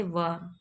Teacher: दांत से जीभ और ओठों के कुछ योग से बोला जाने वाला वर्ण दंतोष्ठ कहलाता है